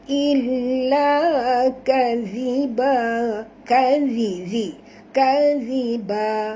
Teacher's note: huruf zal tuan-puan, makhrajnya di hujung lidah, jadi jangan tebal. Illa kadhiba, kadhiba, sentilkan lidah, keluarkan hujung lidah sikit ya.